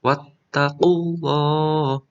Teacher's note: Ini ada lafal Allah tafkhim ya, karena dibaca tebal.